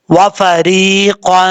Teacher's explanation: اخفا کریں گے نون تنوین کا، ایک الف کی مقدار غنہ کیا جائے گا